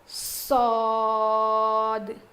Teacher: سواد نہیں, صاد. سین کے جیسا نہیں, الگ ہے, اس کو تھوڑا موٹا پڑھیں گے